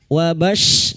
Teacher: masuk pada huruf shin wastul lisan atau tengah lidah